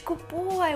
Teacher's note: D goes in your throat and then you concentrate on B